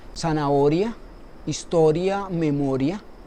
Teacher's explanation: Por ejemplo, si pronunciamos o decimos zanahoria, historia, memoria, podemos ver que son las mismas palabras, que son graves también, pero el acento está colocado en otra vocal, en este caso en la vocal abierta, como es el caso de zanahoria, que lleva el acento en la O.